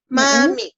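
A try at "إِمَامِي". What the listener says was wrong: Imami. I-nya ketinggalan. I-nya ketinggalan tahu.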